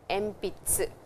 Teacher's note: when we pronounce, we say M, but when we write, the syllable is N.